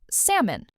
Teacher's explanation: This word has a silent L. A lot of learners say salmon, but native speakers say salmon.